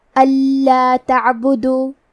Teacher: ہم نون ساکن کو لام میں ملا کے بغیر غنہ سے لیکن تشدید کے ساتھ یہ حکم کو ادا کریں گے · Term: ادغام